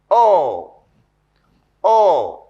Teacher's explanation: the back of the tongue is raised. It is raised between the half open and half closed positions. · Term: Long vowel